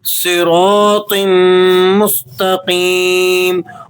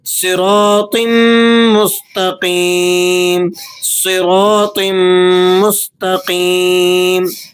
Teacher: صاد، را اور طا، یہ تینوں حروف یہاں موٹے پڑھے جائیں گے